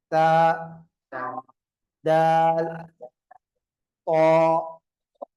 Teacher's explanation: நாவின் நுனி மேல் வரிசை நடுப்பற்களுடைய உள் பகுதியுடன் இணைய